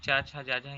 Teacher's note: ये जो च छ ज झ य होती है तालाव्य से निकलती है तालाव्य से निकलती है जिसका मतलब तालुक के ऊपर की जो